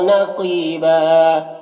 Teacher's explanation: یہاں پر وقف کریں گے تو ایک زبر کے ساتھ الف پڑھیں گے